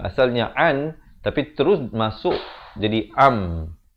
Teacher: Nun mati bertemu mim. Asalnya an, tapi terus masuk jadi am. Dan jangan lupa dengungkan dua harakat. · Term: idgham bi gunnah